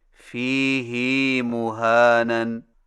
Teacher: فیہ مہانن میں فیہ کی ہا کو کچھ کھینچ کر پڑھیں